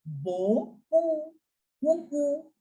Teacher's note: P is completely silent. You will end the pronunciation at U only.